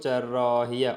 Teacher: Bu saitlərin biri uzun tələffüz olunur. Cərrahiyyə a uzanır.